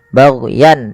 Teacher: Di mana kemudian lafal yan di sini ada izhar halqi, yaitu suara tanwinnya dibaca dengan jelas karena bertemu dengan hamzah, baghyan, dan tidak boleh ada penahanan.